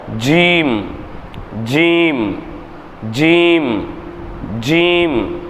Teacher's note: ஜீம் அப்படின்னு சொல்லும்போது நாக்கினுடைய நுனிப்பகுதி வந்து கீழ போயிரும் · நாவின் நடுப்பாகத்தை மேல்முரசில் சேர்த்து உச்சரித்தல். ஜீம், நாக்கினுடைய நடுப்பகுதி நான் சொன்னோமா, ஜீம் அப்படின்னு சொல்லும்போது நாக்கினுடைய நுனிப்பகுதி வந்து கீழே போயிடும்.